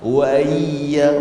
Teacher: Tashil ni sebut antara bunyi hamzah dan bunyi huruf yang sesuai dengan baris hamzah. Wa iya baris bawah sesuai dengan huruf ya, maka dia bunyi itu antara hamzah dan juga ya. Wa iya jadi tak jelas.